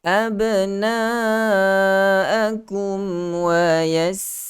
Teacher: Jelaskan huruf mim yang mati itu dengan memberikan sedikit hak gunnah yang ada pada huruf mim yang paling sedikit. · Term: izhar